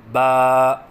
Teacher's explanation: پہلی تختی کا دوسرا سبق حرف با کے متعلق ہے۔ حرف ہے با، مخرج با دونوں ہونٹوں کی تری سے ادا ہوتا ہے، یعنی دونوں ہونٹوں کی تری کے ملنے سے با ادا ہوتا ہے۔